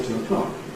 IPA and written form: ˈtʊəˈklɒk (two o'clock)